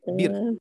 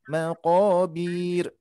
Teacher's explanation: hati-hati bir tidak dibaca panjang Bu di sini. Ya, enggak bir tapi bir langsung.